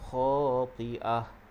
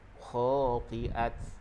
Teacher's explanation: pastikan ta itu kita waqaf dengan ha.